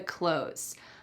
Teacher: in American English when we're speaking quickly that th is really cut out completely it sounds exactly like close the door close the door I'm